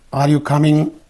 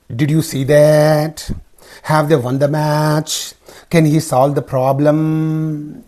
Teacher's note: the pitch Rises at the end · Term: Rising intonation